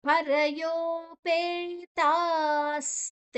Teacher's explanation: ಅಲ್ಲಿ ವಿಸರ್ಗದ ಉಚ್ಚಾರಣೆಯನ್ನ ಸ್ ಅಂತ ತಕೊಳ್ತೇವೆ · ಶ್ರದ್ಧಯ ಯಾ ದೀರ್ಘಾಕ್ಷರ, ಪರಯೋ, ಪರಯೋ ಯೋ ದೀರ್ಘಾಕ್ಷರ, ಪೇತಾಸ್, ಪೇ ದೀರ್ಘಾಕ್ಷರ, ತಾ ದೀರ್ಘಾಕ್ಷರ. ನಂತರ ಅಲ್ಲಿ ವಿಸರ್ಗದ ಉಚ್ಚಾರಣೆಯನ್ನ ಸ್ ಅಂತ ತಗೊಳ್ತೇವೆ.